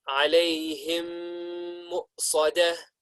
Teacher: we are going to do idgham with the meme sakin and the meme that follows it. And we're going to pronounce it with ghunna. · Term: idgham shafawi